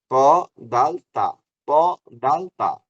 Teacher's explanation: জিহ্বার আগাটা, এই যে জিহ্বার আগাটা দাঁতের গোড়ার সাথে লাগাইতে হবে, উপরের দাঁতের গোড়া, নিচের দাঁত না, উপরের দাঁত।